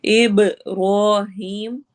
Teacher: बा पे कलकला एको साउंड होगी और हीम पे या मद्दा।